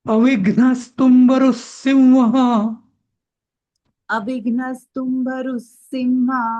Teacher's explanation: नाही मी सांगतो तसं म्हणायचं. एकदा ना रूच्या पुढचा जो विसर्ग आहे ना त्याचा स तुंबरुसिंह असं म्हणायचं